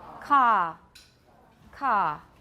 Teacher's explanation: Car has no schwa diphthong, does not become a diphthong, let's put it that way. The vowel does not become a diphthong, there is no schwa. It is simply ka. It's a very long ah sound.